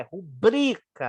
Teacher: não é rúbrica, é rubrica, é uma paroxítona. Nem tem acento.